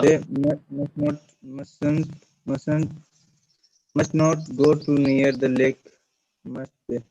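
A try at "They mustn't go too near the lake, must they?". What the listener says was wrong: Very good. That's correct. Mustn't go too near.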